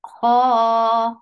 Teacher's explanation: ho is heavy and 2 counts long